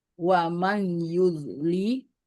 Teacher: nun sukun bertemu dengan ya itu idgham bigunah didengungkan dan dileburkan